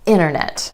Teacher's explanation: Let's talk about vanishing T. Sometimes in American English that t just disappears completely. It happens when the t comes after the n or n sound in an unstressed syllable. · It happens when the t comes after the n or n sound in an unstressed syllable. Vanishing t after the n sound in words like internet. · the N and the T t sound are both made at the ridge behind your top front teeth. It's easier to drop the T sound out instead of doing a double tap.